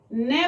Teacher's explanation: न बोलेंगे दांतों का थोड़ा सा, दांतों से खींचता हुआ नाक की तरफ से ध्वनि निकलेगी।